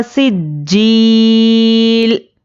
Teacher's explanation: अब यहाँ पर देखिए ज़ेर है तो हरकत को जल्दी पढ़ेंगे, और जीम पर तशदीद है, तशदीद वाले हुर्फ को सख्ती से पढ़ेंगे